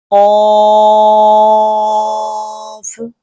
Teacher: زبان کی جڑ کا آخر جو کوے کے پاس ہے جب اوپر کے تالو سے لگے